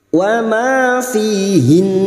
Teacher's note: Tidak dipanjangkan tetapi langsung masuk pada huruf nun dan mendengung selama 3 harakat.